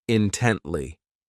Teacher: This adverb has 3 syllables, and the stress is on that second syllable,